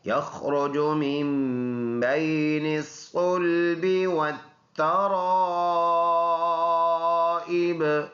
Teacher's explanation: یخرج خا پر ادا ہونے والا حرف ہے، اور را بھی پر ہے کیونکہ را کے اوپر پیش ہے